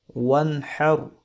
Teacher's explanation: یہاں پر نون ساکن کے بعد حروف حلقی میں سے حا ہے تو یہاں پر ہم نے اخفا نہیں کیا